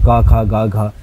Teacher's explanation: ক খ গ ঘ, এটা কণ্ঠে হচ্ছে, তো ওগুলোকে আমরা কণ্ঠবর্ণ বলবো, এবং অ আ এটা হলো কণ্ঠবর্ণ।